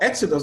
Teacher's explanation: for exodus the stress is on the first syllable